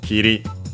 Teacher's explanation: But yeah, being that to make the continuative form, we have to change the U into I. So Kiri, accent on the last syllable, so regular